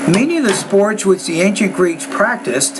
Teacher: pay attention to the tone at the end of each thought group which is slightly higher